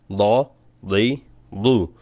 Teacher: দদটা একটু কঠিন জিহ্বার গোড়া দিয়ে বলতে হবে এবং জিহ্বার গোড়া উপরের দিকে উঠবে আইনের আভাস পাবে তা না হলে এটা দাল হয়ে যাবে কিন্তু